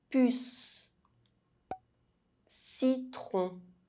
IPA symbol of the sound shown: s